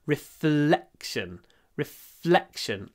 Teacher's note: L, a long L. Reflection, but then a short E before the unvoiced K.